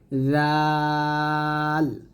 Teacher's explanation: জিহ্বাটা সামনের উপরে দুই দাঁতের আগার সঙ্গে লাগিয়ে সার মত উচ্চারণ করতে হবে পাতলা করে